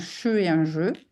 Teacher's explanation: un che et un je, qui est exactement le même point d'articulation